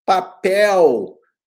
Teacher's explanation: O L forma um ditongo porque o L tem som de U. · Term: semivogal